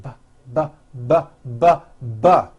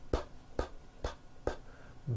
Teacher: You see that everything here stays the same. The only difference is my vocal cords are either vibrating or they're not vibrating. So we say the P sound and the B sound are paired consonants.